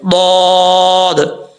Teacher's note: ضاد حروف مستعلیہ میں سے پر پڑھا جائے گا. ضاد کا مخرج ہے زبان کی کروٹ اوپر والی جو داڑیں ہیں ان کی مسوڑوں سے لگے, یعنی ان کے جو جڑیں ہیں ان کے ساتھ ٹچ کرے گا اور زبان اوپر اٹھے گی تو ضاد پڑھا جائے گا.